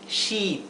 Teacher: se pronuncia sh She con una I larga